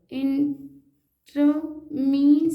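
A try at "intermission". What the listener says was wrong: ट्रो क्यों पढ़ रही है, ई आर को आर, ई आर को आर पढ़ते हैं, टी लगा तो टर हो गया। तो इंटर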